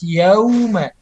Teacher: Ketika waw jangan sampai dibaca o, yauma, harus yauma.